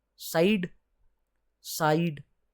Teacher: साइड, साइड, है ना? तो सा आ आएगा, फिर ई आ जाएगी। तो ये दो स्वर के साउंड एक साथ आ गए। सा, जिसमें साइड में आप पढ़ेंगे तो आ और ई, दो साउंड एक साथ आ गए वॉवल्स के, तो ये भी आपका ग्लाइडिंग वॉवल्स या फिर डिफ्थोंग्स कहलाएगा।